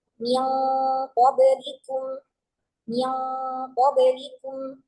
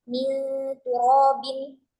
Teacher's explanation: min qablikum itu gunnahnya tebal, kok nggak seperti min turobin yang gunnahnya tipis